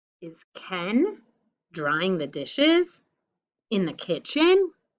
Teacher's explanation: see how my voice goes up at the end because it's a question